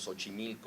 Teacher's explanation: los mexicanos decimos Xochimilco pronunciando la X como una S